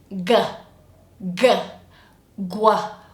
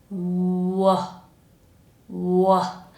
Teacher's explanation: The sound that we need is only using the lips, w, w. And the tongue is just down and relaxing. It's not doing anything. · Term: w sound